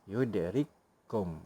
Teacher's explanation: Kaf pertama mati bertemu dengan huruf kaf kedua yang berbaris. Bila dia bertemu, kita idghamkan dan dia jadi satu huruf. Seolah-olah menjadi satu huruf yang bertasydid. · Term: idgham mutamasilain